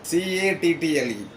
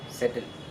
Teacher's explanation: you have to give stress on the first syllable